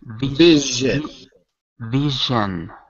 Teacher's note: this is like the S but using your vocal cords